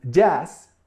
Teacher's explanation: jazz is spelled with doble Z, but it comes from English. But we pronounce it with S. So, we sort of tend to keep the pronunciation in the original language.